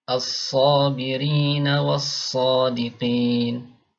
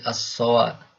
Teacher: Alif pada asalnya dibaca tipis A, tapi ketika sebelumnya ada huruf tebal maka dibaca tebal jadi O ya.